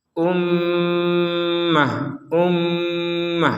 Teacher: ada mim bertasdid maka kita membacanya dengan dengungan dengungan itu di rongga hidup kita berdengung ya kita beri jeda